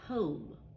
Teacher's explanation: Here, I don't say the B, comb. You just hear the M sound, right? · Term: silent B